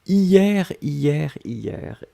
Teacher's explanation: on l'écrit avec un H, mais le H est totalement muet.